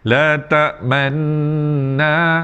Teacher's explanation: dengung macam biasa kerana berjumpa dengan nun yang bertanda sabdu